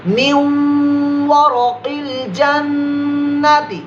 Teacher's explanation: واو کہاں سے ادا ہوتا ہے؟ ہونٹوں کی گلائی سے. تو یہیں سے غنہ کریں گے. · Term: ادغام کا